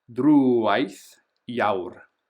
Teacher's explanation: notice we've got the accent, so we're going to make that longer